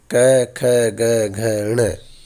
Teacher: इन सभी वर्णों का उच्चारण स्थान जिह्वा की सहायता से कंठ होता है, और चूंकि ये कंठ से बोले जाते हैं, कंठ से उच्चारित होते हैं, इसलिए इनको कंठ्य वर्ण भी कहा जाता है।